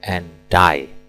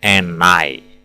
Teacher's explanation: karena bunyi akhirnya adalah D D ketemu I, and die, bukan and I.